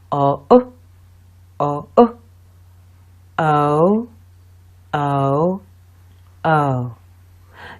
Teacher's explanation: You will find that you move from a more open position to a more closed position as you make the sound. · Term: O sound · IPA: /əʊ/